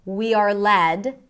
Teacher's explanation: We are led, stress on led, by our gut instincts